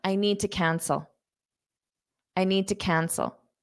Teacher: I'm not pushing out that D